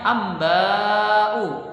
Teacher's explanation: Kemudian pada kata berikutnya amba'u, di sana terdapat hukum bacaan mad wajib muttasil, yaitu yang mana ketika mad tabi'i amba bertemu dengan hamzah pada satu kata, maka kita membacanya bisa 4 ataupun 5 harokat